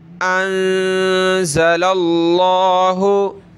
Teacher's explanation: لام پہ زبر موٹا کریں گے